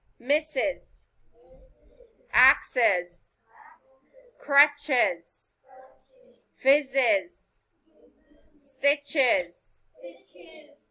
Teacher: adding a vowel sound between the two hissing sounds make the words easier to say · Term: extra vowel sound